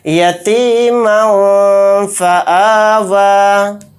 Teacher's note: میم دو زبر من کہتے ہوئے جو نون کی آواز آ رہی ہے لاسٹ میں اس میں اخفا اس طرح سے کریں گے، یتیما فآوا، میم نون زبر مو،